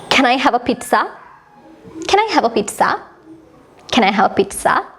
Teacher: වාක්‍ය අවසානයේ අපි highlight කරනවා අපේ හඬ ගැඹුරු කරනවා අපි අපේ voice එක ටිකක් උස් කරනවා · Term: rising intonation